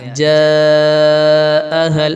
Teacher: اس کو 5 الف کے برابر کھینچیں گے آپ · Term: مد متصل